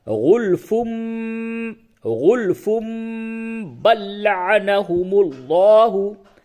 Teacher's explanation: नून या तनवीन की आवाज को मीम से बदल करके पढ़ते हैं। और अलामत के तौर पे एक मीम लिख देते हैं। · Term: इकलाब